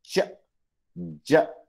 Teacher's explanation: ये पहला सिंबल च के लिए है, दिस इज फॉर ज साउंड. तो जब हम ये बोलते हैं च, ज, तो उसमें स्टॉप भी आता है और थोड़ी सी फ्रिक्शन भी है, that is why we call it अफ्रिकेट.